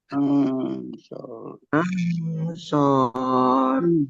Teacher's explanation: nun sukun bertemu dengan huruf shad. Bacaan ikhfa dibaca samar-samar.